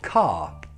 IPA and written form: kɑ: (car)